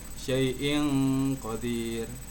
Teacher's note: kita bacanya berdengung 2 harokat